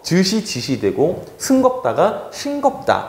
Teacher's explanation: 시옷, 지읒, 치읒 아래에 으라는 말이요. 이 으라는 거는 원래 후설 모음이죠. 근데 얘가 그냥 이라는 전설 모음으로 바뀌어요. 그래서 즈시, 지시 되고 승겁다가 싱겁다, 이런 식으로 표기가 바뀌게 됩니다. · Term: 전설 모음화